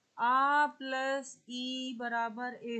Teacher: आ कंठ से होता है उच्चरित और ई होता है आपका तालू से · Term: कंठ तालव्य